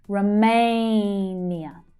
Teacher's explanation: Now the main stress is on the second syllable so it's /eɪ/ as in 'day' · And the first syllable is unstressed so it reduces right down.